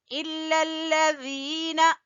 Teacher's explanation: ذال زبان کی نوک اور سامنے والے دو دانتوں کے سرے سے ذال ادا ہوگا، اور آگے ہے یا مدہ تو ذال کو کھینچیں گے۔